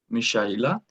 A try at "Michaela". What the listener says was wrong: No, you're saying it also with a sh. Michaela. It's Michaela. Michaela. because so many people have such a problem. They are saying Michaela or Michaela, but no one can really say the Michaela with a sh.